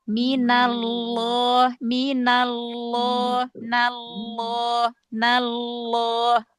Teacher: pangkal lidahnya terangkat ya, tengah lidahnya cekung, terus otomatis karena pangkal lidahnya naik, jadi otomatis tenggorokannya menyempit. Nah, itu yang menyebabkan taf ya berarti benar-benar betul-betul sampai lengket banget ya. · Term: lam yang tebal